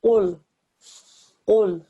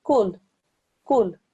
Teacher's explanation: a thick and heavy sound, comes from the back of the throat, right at the top of the throat